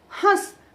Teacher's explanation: ह के साथ ही नासिक की ध्वनि निकल रही है। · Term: अनुनासिक